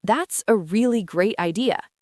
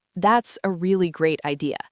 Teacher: My voice went up on the word great. It sounded enthusiastic.